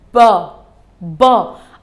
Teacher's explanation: जब मैंने इसको बोला तो मेरे lips they attached with each other